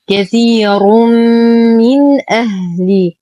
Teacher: تنوين بعده حرف الميم. الحكم إدغام كامل مع غنة أكمل ما تكون. الزمن هو أطول زمن